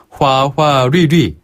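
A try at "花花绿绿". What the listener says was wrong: 이때 류 발음은 너무 짧게 하지 마시고요. 조금 더 길게. 류. 화화류류.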